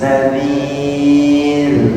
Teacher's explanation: sebelumnya kasrah, dia dibaca ra-nya dibaca tipis